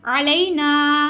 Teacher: ना अलिफ मद है हमने इसलिए इसको खींचा है।